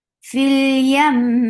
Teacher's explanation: It's a longest gunna, so you have to give it a time in your nose. fil yam سو یہ میم جو ہے longest غنہ لے رہا ہے، اس کو ناک میں ٹھہرانے کا وقت بہت لمبا ہے